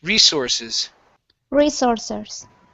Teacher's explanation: The stress is at the very beginning.